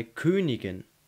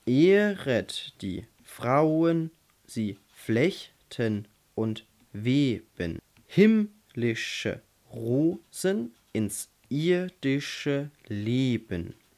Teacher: Der Dactylus ist genau umgekehrt, das heißt, wir haben zuerst eine Betonung und dann zwei, die nicht betont sind. Das ist zum Beispiel bei Königin.